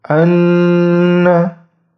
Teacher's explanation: Jadi posisi lidahnya itu berada di pangkal gigi seri atas. Ujung lidahnya berada di pangkal gigi seri atas untuk huruf nun.